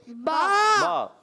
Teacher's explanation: با کا مخرج ہے دونوں ہونٹوں کا تر حصہ. دونوں ہونٹوں کے تر حصے سے ملنے سے دونوں ہونٹوں کے تر حصہ جب ملتا ہے تو ادا ہوتا ہے با.